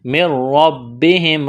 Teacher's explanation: نون ساکن کے بعد را ہے، یہاں پر غنہ نہیں کریں گے، ادغام کریں گے بغیر غنے کے. من ربہم را اور با میں سختی کریں گے.